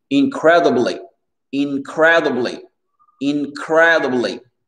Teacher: l'accent tonique ici, comme je vous avais mentionné, il est sur le cred.